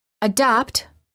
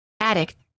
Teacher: first you will hear a word with a normal du and then one with a fast D